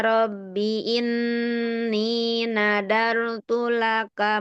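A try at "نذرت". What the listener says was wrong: Sedikit Ibu di kata nazarotu, tidak nadarotu ya. Huruf zalnya jangan seperti da. Nazarotu. Hanya tadi sedikit di huruf zal ya. Nazarotu, tidak nadarotu ya.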